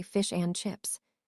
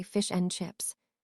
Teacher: The and becomes just the letter N.